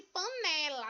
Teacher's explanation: A sílaba tônica é a penúltima. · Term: paroxítona